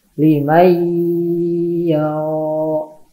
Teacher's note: Nah, contohnya itu nun mati menghadapi huruf ya. Nunnya jadi hilang, langsung masuk ke huruf ya. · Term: idgham bigunnah